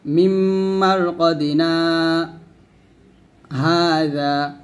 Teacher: মিম্মার কদিনা এবং হাদা দুটি শব্দ কিন্তু আমি এক শ্বাসে পড়ছি, মাঝখানে শুধুমাত্র আমি 1 থেকে 2 সেকেন্ডের মতো আওয়াজটা বন্ধ করছি, এইটুকু, এটাকে বলে হয় সাক্তা।